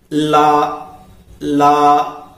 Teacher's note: इसके उच्चारण में जीभ हमारे मुख के मध्य भाग में स्पर्श करती है और वायु उसके दोनों ओर से निकलती है, तब ये उच्चरित होते हैं। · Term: पार्श्विक व्यंजन